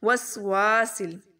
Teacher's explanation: وا کو لمبا کریں گے، سی کو لمبا نہیں کرنا. وسواسل. سل سین لام کے ساتھ ملا دیں گے.